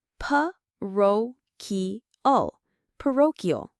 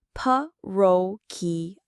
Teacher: The stress is on that second syllable, ro.